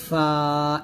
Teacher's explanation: নিচের ঠোঁটের প্যাড সামনের উপরে দুই দাঁতের আগার সঙ্গে লাগিয়ে ফা উচ্চারণ করতে হবে পাতলা করে